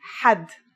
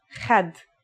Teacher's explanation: It's also similar to the sound people make when they snore. According to phonetic charts, ha is pronounced in a deeper part of the throat than kha.